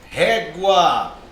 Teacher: Perceba, ó, sílaba tônica é o ré.